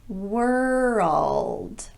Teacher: So that sound in front of the dark L creates what sounds to the ear like a new syllable.